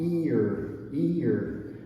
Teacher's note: And this one is the sound ear, ear. So it starts with the E, the tense sound, and then goes to the relaxed.